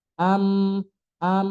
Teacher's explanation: Kalau mim berarti kedua bibir nempel, ditambah hidung. Itu adalah mim yang jelas.